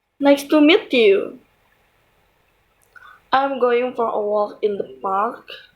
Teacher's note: the pitch of the voice falls at the end of the sentence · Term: falling intonation